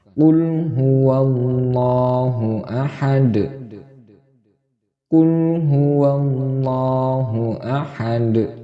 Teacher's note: Karena ini diwakafkan atau dihentikan, maka dal di sini itu salah satu huruf qalqalah. Maka cara bacanya yaitu dipantulkan menjadi qalqalah kubra karena diwakafkan.